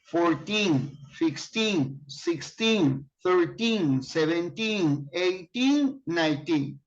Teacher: When you use number from 13 to 19, the accent is on teen.